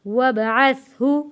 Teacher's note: با حروف کلکلہ ہے، آواز واپس پلٹ کر آئے گی ، وابعثہ مقاما، قاف کو موٹا پڑھیں گے، حروف مدہ ہے